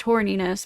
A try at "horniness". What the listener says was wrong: Ghosty, you have to say the H hard, horniness.